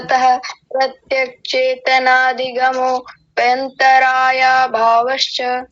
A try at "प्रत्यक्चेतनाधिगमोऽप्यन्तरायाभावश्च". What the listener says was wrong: ठीक है, बस थोड़ा सा हल्का सा फंबल यहाँ हुआ था प्रत्यक्ष चेतनाधिगमो रुकिए तनिक प्रत्यक चेतनाधिगमोप्यंतराया, अधिगमोप्यंतराया इसी के साथ जुड़ेगा, अधिगमोप्यंतराया भावश्च। बाकी ठीक है, ऐसा कुछ